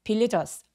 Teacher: villagers 할 때 발음하기 전에 반드시 바람 소리가 반드시 느껴져야만 합니다. 그러니까 villagers 아니고 villagers라고 과하게 바람 소리를 느끼게 해주세요.